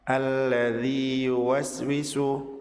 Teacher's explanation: Mat ya di akhir kata alladzi bertemu dengan ya di awal kata yuwaswisu tidak dilebur karena apabila dilebur maka matnya akan hilang.